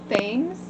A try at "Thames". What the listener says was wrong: Thames. The H is silent.